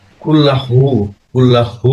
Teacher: কুল্লাহু বলতে হবে, কুল্লাহু হু আসবে গলা থেকে